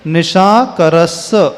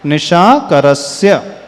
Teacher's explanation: स्य का उच्चारण होना चाहिए, न कि मात्र स का उच्चारण